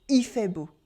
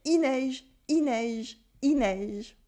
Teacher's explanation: It's written il fait beau, and we pronounce it il fait beau. We cut the final L in il. And it's the same with il pleut, it's raining.